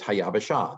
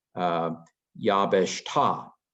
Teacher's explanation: This is the Aramaic version of it, Yabesh Ta, where the Kamatz Aleph is the instead of the Ha on the front. Hebrew does Ha on the front, Aramaic does Ah on the back.